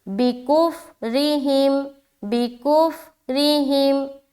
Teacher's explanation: را کو باریک رکھنی ہے کیونکہ را کے نیچے زیر آ گیا